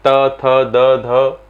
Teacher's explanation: जिसका उच्चारण ऊपर के दांतों पर जीभ लगने से होता है तो उसे कहा जाता है दंतव्य।